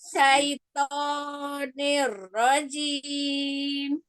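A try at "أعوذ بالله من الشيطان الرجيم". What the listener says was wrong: Naam, shin, tafashinya kurang. Lalu asyaitoni. Nah, ni kasrohnya nggak boleh nih. Niro, tapi i. Rojim.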